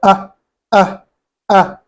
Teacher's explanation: من أقصى الحلق. It comes from the farthest part of the throat. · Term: hamza